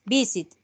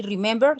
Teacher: visit no tiene la fuerza al final